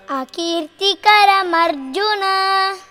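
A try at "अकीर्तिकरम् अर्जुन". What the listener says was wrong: Yeah. You got it right?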